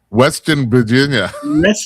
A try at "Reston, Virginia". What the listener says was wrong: Reston, Virginia. Form your lips and form the R. Pretend you're a pilot.